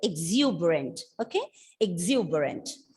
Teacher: the stress is on the second syllable, exuberant